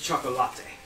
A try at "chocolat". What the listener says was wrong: No, it's chocolate. It's a silent E. Much like Charlotte isn't Charlotte. it's because they want you to say chocolate.